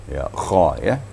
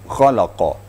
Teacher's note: Kha membacanya harus ada getaran pada tenggorok kita.